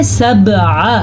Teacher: اکثر لوگ اس کو سبع ایسے پڑھتے ہیں جبکہ یہ ہے سبع، عین زبر ع۔ اگر اس کو کوئی پڑھے گا سبع تو اس نے الف پڑھا، عین نہیں پڑھا